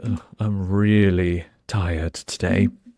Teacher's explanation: So really, you have to kind of smile when you say it. It's a long E sound.